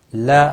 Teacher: مل ادغام ہوگا بغیر گناہ کے۔ لا الف مدہ ہے، 1 الف کے برابر کھینچ کر پڑھیں گے